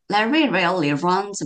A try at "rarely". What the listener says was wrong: 어, 굳이 지적을 하자면 확실히 R하고 L하고 가까운 단어에서 조금 이제 그 발음이 뭉개지는 게 있죠. rarely 아니면 rare, rarely